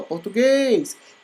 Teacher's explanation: Então, o guês é o mais forte, logo ele é oxítona.